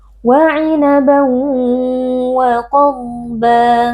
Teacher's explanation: qaf huruf tebal, dhad juga huruf tebal, kita baca dengan mengangkat pangkal lidah